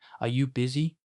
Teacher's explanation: гэх асуултыг хэлэхдээ төгсгөлд нь дууны өнгөө өсгөнө. Энэ нь асуулт тавьж байгааг илэрхийлэх чухал тохиол юм.